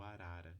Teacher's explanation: eu posso falar que é o tep alveolar sonoro